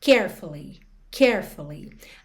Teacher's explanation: quando você fala essa palavra, a sílaba tônica é a primeira, carefully.